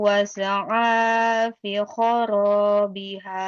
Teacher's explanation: Masajidallahi ayyuzkara fiha ismuhu wa sa'a fi kharabiha. Fa-nya kasroh ketemu ya panjang ya.